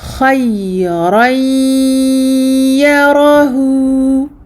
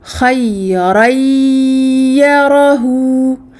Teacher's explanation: avec le ya en faisant une nasalisation très complète, très longue